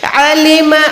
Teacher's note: नून को छुपाएं, नून के बाद सीन होती है